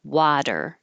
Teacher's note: this T changes to a D, technically an alveolar flap, but I don't have that symbol on my keyboard, so just a D is good enough.